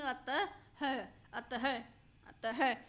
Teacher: इस विसर्ग को हम हा के रूप में उच्चारित करते हैं